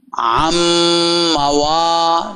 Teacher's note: نون میم میں مدغم ہو گیا